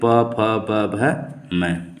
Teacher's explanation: जो वर्ड दोनों ओष्ठों को मिलाने पर उच्चारित या बोले जाते हैं वे ओष्ठ ध्वनियाँ कहलाती हैं